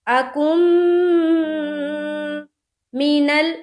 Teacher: تو جب کاف کو میم سے ملائیں گے تو میم مشدد کا غنہ کریں گے